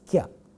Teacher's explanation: It has got a cluster of two consonants in the beginning of the word, and the two consonant sounds are ka and ya, and then follows a vowel.